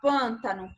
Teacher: você não abre muito a boca para pronunciar o pam pam você abre mas não abre como em PA